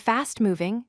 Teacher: Notice how the stress falls on the quality word that comes first. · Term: first word stress